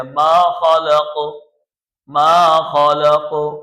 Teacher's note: بڑا قاف ہے، موٹا قاف ہے، اس کو موٹا کر کے پڑھتے ہیں